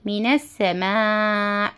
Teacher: حرف مدہ کے بعد حمزہ اسی کلمے میں ہے، اس لیے ہم اس کو 5 حرکت کے برابر کھینچ کر پڑھنا